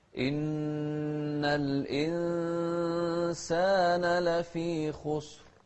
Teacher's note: شوف الإخفاء هني في الإنسان. الإنسان نون ساكنة بعدها سين. إن الإنسان لفي خسر، والخاء مفخمة، والراء هني المتطرفة أيضا مفخمة ساكنة، بس قبلها ساكن وقبل الساكن مضموم.